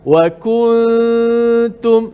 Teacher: Wa kuntum, tapi sebenarnya salah. Biar dia bunyi renggang sikit, ikhfa, sembunyikan nun mati.